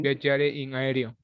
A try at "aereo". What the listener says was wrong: No, no es erio, reo. Abre un poquito más esa E, que se escucha I.